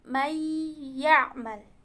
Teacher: Nunnya tidak jelas, tapi ada suara dengung gunnahnya. May. Jadi itu namanya idgham. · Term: idgham bigunnah